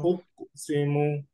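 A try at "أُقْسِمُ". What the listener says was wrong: উক না, উকো, উকো না, আপনি উকো দিয়ে ধাক্কা দিচ্ছেন এখন, উকো সিমু, মানে নর্মালি ইজিলি উকো সিমু।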